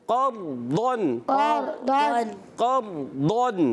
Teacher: अच्छा, दौद की अदायगी सही रखनी है, रा को भी सही पुर करना है, काफ को भी पुर रखना है।